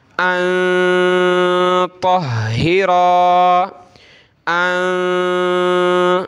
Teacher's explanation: نون پہ یہ جزم ہے، نون ساکن، اس پہ ہم نے ناک میں آواز پیدا کرنی ہے ، ان طہرا، ان، اور ہا کو ہم نے سخت کرنا